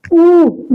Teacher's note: पश्च स्वर है जिन स्वरों के उच्चारण में जीभ के पीछे का भाग काम करे।